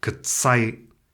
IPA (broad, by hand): kət͡saj³